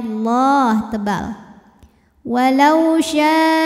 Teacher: lam pada lafaz Allah atau lam jalalah dibunyikan secara tafkhim sebab harokat huruf sebelumnya berbaris fathah, maka bacanya Allah tebal.